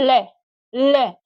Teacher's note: जीभ एकदम ऊपर उठी, आपके मसूड़े को स्पर्श किया, और जो अगल बगल का जो भाग है वो हवा है वो उससे बाहर क्या करती है, निकलती है। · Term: पार्श्विक व्यंजन